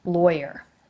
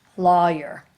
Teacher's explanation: lawyer with an oi sound, or lawyer with the aw sound